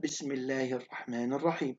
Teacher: أما ترقق اللام في لفظ الجلالة إذا وقعت بعد كسر